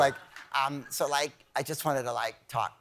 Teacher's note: It's always some young lady with a vocal fry.